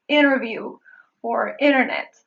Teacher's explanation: the silent T in words such as interview or internet